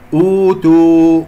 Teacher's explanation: واو ساكنة قبلها همزة مضمومة، هنا سوف يكون لدينا مد حركتين بدل